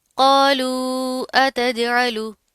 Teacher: अब यहाँ पर क्या है, कौफ मोटा पढ़ा जाएगा, साथ का अलिफ भी मोटा पढ़ेंगे, वाव के ऊपर क्या है, यहाँ वाव साकिन मा कबल पेश है, वाव मद्दा आ रही है, और साथ ऊपर क्या है, मद आ रही है, तो इसको लंबा करके खींच कर पढ़ेंगे। ठीक है, जीम के ऊपर क्या है, यहाँ पर साकिन आ रहा है, तो यहाँ पर कलकला करेंगे, जीम में चे की साउंड नहीं आनी चाहिए।